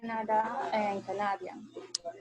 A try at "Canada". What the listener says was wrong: Yeah, but be careful. In English, it's Canada. The accent goes in the first syllable. Canada.